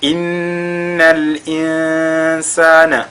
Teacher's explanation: au niveau déjà de Noun qui est mushaddada, on fait al-ghunna.